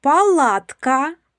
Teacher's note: Твердий приголосний л перед буквою А.